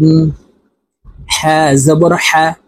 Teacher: হার মখরাজ হলকের মধ্যখান থেকে হবে। তো আমরা হলকের মধ্যখান থেকে এই হা হরফের উচ্চারণ করব।